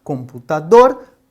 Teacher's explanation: dor é a sílaba mais forte. Nós então consideramos essa uma palavra oxítona